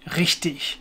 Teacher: the R sound, the proper high German R sound that comes from the back of the throat is very different to the English r sound.